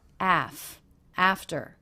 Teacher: the second syllable very low and Pitch flat and quick